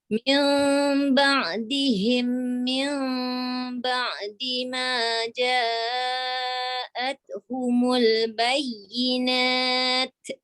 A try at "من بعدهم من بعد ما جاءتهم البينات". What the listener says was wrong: Jangan bunyi te. Dia ada suara, dia tak ada bunyi te. Ba'di ma ja'athumul bayyinat.